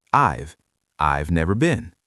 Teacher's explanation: When native speakers say this, they do not pronounce every single word clearly. They do not say, I have never been. They squish the first two words together.